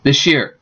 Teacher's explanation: because it's hard to say these sounds follow by y so s and Y often ends up sounding like sh · s and y often ends up sounding like sh. So if you say this year, it would sound this year. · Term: coalescent assimilation